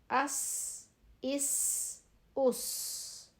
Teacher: س whistling sound باریک آواز